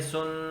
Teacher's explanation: سین کے اوپر 2 پیش آئے گا، سین 2 پیش سن کر کے ہم نے سن، نون کی آواز کو ہم نے ناک کے اندر گھما دیا۔ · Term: غنہ